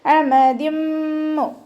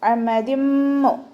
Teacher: ഇവിടെ തെൻവീനിന് ശേഷം മീം വന്നതുകൊണ്ട് ഇതാ ബ്യൗന്നയാണ് കേട്ടോ. ആ തെൻവീനിലുള്ള നൂനിനെ അടുത്ത മീമിലേക്ക് ലയിപ്പിച്ച് മണിച്ചോതാ കേട്ടോ.